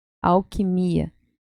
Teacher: Además de nosotros no pronunciarmos al, é ao, como se fuera una U.